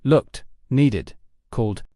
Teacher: looked sounds like t, needed sounds like e d, and called ends with the d sound